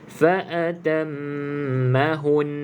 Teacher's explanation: Sabdu ni kita kena bunyikan juga. Okey, jadi caranya fa'atammahun, mahun kena dengung. Okey, Kalau kita tak bunyikan fa'atammahun sahaja, seolah-olah tidak ada sabdu.